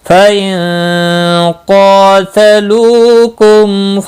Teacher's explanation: نون ساکن کے بعد حروف اخفاء کا حرف قاف آیا، اخفاء حقیقی ہوگا، قاف مستعلیہ ہے، پر بھی پڑھا جائے گا، اس کے اوپر کھڑی زبر ہے، ایک الف کے برابر کھینچ کر بھی پڑھیں گے۔